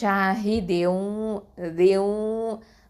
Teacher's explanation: குன்னாவும் செய்யணும், இதுகாமும் பண்ணணும், இணைச்சு ஓதணும் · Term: இதுகாம் பில் குன்னா